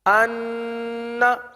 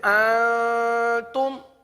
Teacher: مشدد کا گنہ انا، اور اکفا کا گنہ اس سے تھوڑا سا نیچے